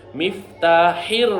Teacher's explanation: গলার মধ্য থেকে হা